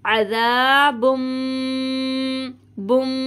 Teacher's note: मीम आ रहा है, यहाँ पे इदगाम का गुन्ना हो रहा है, इसी वजह से हमने इसको यूँ पढ़ा अज़ाबुम बुम, इस तरह से गुन्ना करना है यहाँ पे।